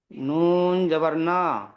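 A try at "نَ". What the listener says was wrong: নুন জবর না। ঝাটকা হবে না, এখানে ঝাটকা দেবে না।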